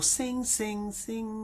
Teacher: the back of the tongue is touching the back of your palate. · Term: hum